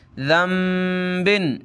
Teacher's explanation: मिन कुल्ली ज़ंबिन, ये भी आपको कायदा पढ़ाया था कि नून साकिन के बाद बा आ जाए तो छोटी सी मीम हमने पढ़नी होती है नून के साथ